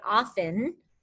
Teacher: if you don't pronounce the t and you just say often it would have a silent t